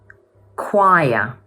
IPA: k